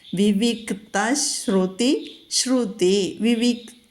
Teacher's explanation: അപ്പോൾ നമ്മൾ ആ ക ഒന്ന് പതുക്കെ ഹോൾഡ് ചെയ്തിട്ട് വേണം താ ഉച്ചരിക്കാൻ. താ തന്നെ ഉച്ചരിക്കണം, അത് മൃദുവാകാനോ ഘോഷമാകാനോ പാടില്ല.